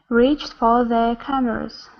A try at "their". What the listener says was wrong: give me an R here there instead of the there there there